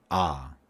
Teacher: you can feel the vibration in your throat and that means it's voiced